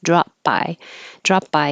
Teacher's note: it's just not releasing the P because you have the B right after it drop so I put that little Mark there drop by drop